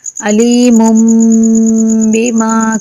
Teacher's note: میم تنوین کے بعد بھی چھوٹا میم آنے کی وجہ سے میم کا اس میم میں ادغام ہوگا، یعنی کہ دونوں میم کو ملا کر پڑھیں گے. علیم، میم تنوین کا میم میں ادغام ہوگا اور اس کے بعد با آنے کی وجہ سے غنہ ہوگا